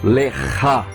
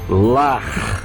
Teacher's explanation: é aspirado, vai sair lá do fundo da garganta, bem forte